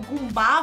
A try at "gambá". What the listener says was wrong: Gumbá, o que é gumbá? É gambá, não gumbá.